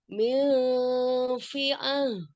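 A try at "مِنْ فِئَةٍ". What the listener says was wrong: Bukan lagi itu hamzah. Kalau hamzah gimana? Min fi'ah.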